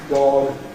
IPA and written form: dɒg (dog)